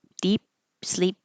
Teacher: Deep sleep, don't release the p air.